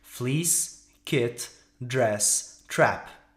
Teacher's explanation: vous verrez que la langue ne bouge pratiquement pas, mais que la mâchoire inférieure descend.